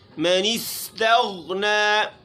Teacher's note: غین کو موٹا پڑھنا ہے، قلقلے سے بچانا ہے